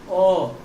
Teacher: मध्य स्वर जीव का मध्य वाला भाग प्रयोग में आएगा तो उसे मध्य स्वर कहेंगे